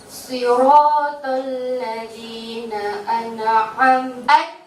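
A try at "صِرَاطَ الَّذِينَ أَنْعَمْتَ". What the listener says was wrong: An'am, dilarang pantul di situ. An'am, tahan, jangan sampai terpantul. An'am lagi. An'am. Matikan dulu nunnya. An'amta. An'amta.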